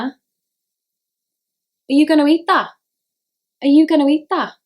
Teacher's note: T and D are dropped from the end of words